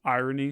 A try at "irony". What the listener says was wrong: you you say iron and then add KN to the end